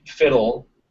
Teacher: you can get like fiddle without a schwa between the flap and the L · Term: syllabic L